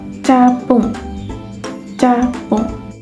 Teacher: Nah, seperti kata ini paduan yang berarti gabungan, ya. Jadi ini gabungan antara artikulasi hambat dan geseran di mana aliran udaranya itu dihambat total dahulu baru dilepaskan melalui celah sempit sehingga terjadi geseran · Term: cara artikulasi paduan